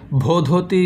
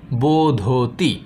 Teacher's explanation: ভ ও ধ পরপর দুটি মহাপ্রাণ ঘোষ ধ্বনি ছিল, তাই ভ পরিবর্তিত হয়ে সংস্কৃতে ব হয়ে গেছে